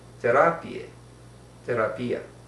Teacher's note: Neither Yiddish or Spanish have a TH, so these words are pronounced and written with T's.